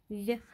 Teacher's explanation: Этот звук согласный, звонкий. У него есть пара по звонкости, глухости, значит, он парный.